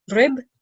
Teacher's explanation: because it has shadda, we're going to make two ba sounds.